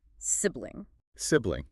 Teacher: with the emphasis on the first syllable and a short I sound